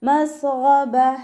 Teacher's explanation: തൊണ്ടയുടെ ആദ്യ ഭാഗത്തു നിന്നാണ് ഗൈന് വരുന്നത്